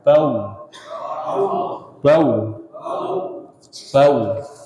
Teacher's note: Adapun mim dan ba, ma, ba itu diawali dengan tertutupnya dua bibir.